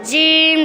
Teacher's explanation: جیم د ژبې من بر تالو طرف ته اوچت شي او هغې نه جیم ادا کېږي